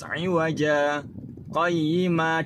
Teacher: Bacaan saktah artinya berhenti sejenak, sekedar satu alif tanpa bernafas.